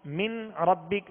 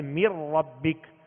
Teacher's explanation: میم کو را سے ڈائریکٹ ملائیں گے اور نون اس میں داخل ہو گیا، نون اس میں داخل ہو گیا.